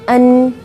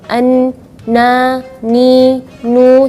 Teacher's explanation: Jadi ketika melafalkan huruf nun tidak ada anginnya keluar. An, na, ni, nu, tidak ada. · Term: sifat jahar